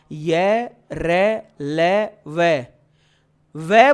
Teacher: तो ध्यान रखना व दंतोष्ठ वर्ण है क्योंकि जब आप व बोलते हो ना तो आपका जो नीचे का हंठ है वो हल्का सा ऊपर के दांतों से स्पर्श करता है।